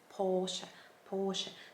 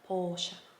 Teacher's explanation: the r sound is actually silent so you kind of have that o sound a little longer